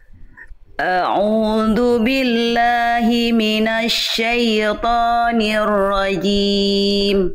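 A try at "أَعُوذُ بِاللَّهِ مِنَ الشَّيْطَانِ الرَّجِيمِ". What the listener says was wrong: Tinggal to-nya udah bagus. Sekarang tebalkan lagi. Pangkal lidahnya diangkat lagi.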